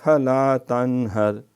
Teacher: تن غنّہ نہیں کرنا، یہاں اظہار کرنا ہے